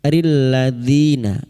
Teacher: di kasar bertemu ya sukun 2 harokat mad tabi'i